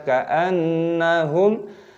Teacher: Ka'anna nun tasdid hukumnya dibaca ghunnah berdengung